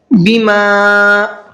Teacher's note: اس کو 1 سے 3 الف کی برابر کھینچ کر کے پڑھنا ہے۔ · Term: مد منفصل